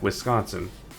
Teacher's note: you're pronouncing it as if like the C is also in the first syllable, as opposed to where I feel like it should probably be more of the second syllable thing.